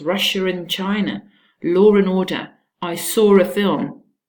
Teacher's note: There's actually no R in spelling, and you still pronounce it. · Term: intrusive linking R